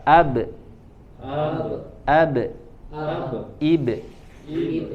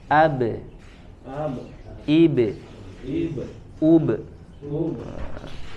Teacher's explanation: karena huruf ba-nya dia tipis ya maka pantulannya atau qalqalahnya juga tipis.